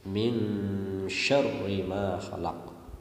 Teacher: Pada ayat kedua, pada lafaz min itu ada bacaan ifa hakiki karena ada nun sukun bertemu shin. Ifa hakiki harus dibaca dengung.